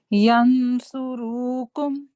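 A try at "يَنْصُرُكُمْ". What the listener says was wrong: ये रू को भी आप लंबा कर रहे हैं, फिर एक दफा कोशिश कीजिए, नहीं तो फिर मैं आपके लिए पढ़ूंगी। جی ماشاءاللہ بیٹر ہے، لیکن ینصرکم، ٹھیک ہے، جو اخفا ہے وہ بھی محسوس ہو کے موٹا ہے، مفخم ہے. ایسے آواز نکالیے ایسے.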